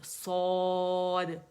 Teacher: اور کھولیں منہ، الجوف کھولیں، صاد، کیونکہ الف مدہ بن رہا ہے اور یہ وہیں سے ادا ہوگا